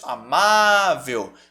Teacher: sílaba tônica a penúltima é uma paroxítona